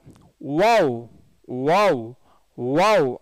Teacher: பல்லுக்கு வேலையே இல்லை, உதடு வட்டமாகும்